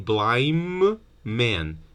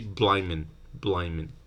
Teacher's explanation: The one in the middle might be deleted, and then you have blind man. But then when n is before a bilabial sound, it's assimilated, right? So you end up saying blind man, and then you have two ms.